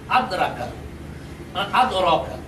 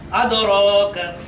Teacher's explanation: এই দালটাকে কলকলা উচ্চারণ করতে হবে, অর্থাৎ প্রতিধ্বনি করে উচ্চারণ করতে হবে। এখানে দেওয়া আছে যদি আমি প্রতিধ্বনি করে উচ্চারণ না করি, কলকলা না করি, তাহলে হবে উচ্চারণটা আদরাকা, আদরকা।